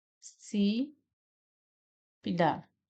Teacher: aqui o si é a sílaba mais forte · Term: proparoxítona